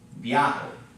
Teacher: this is a diphthong, so it gets kind of run together into one syllable